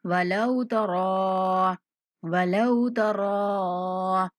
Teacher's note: रा को 3 सेकंड तक लंबा करके पढ़ेंगे।